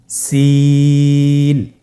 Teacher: সিন হরফটি উচ্চারণ ক্ষেত্রে অবশ্যই 3 আলিফ টেনে পড়তে হবে। সিন হরফটি বারিক হরফ, পাতলা করে উচ্চারণ করতে হবে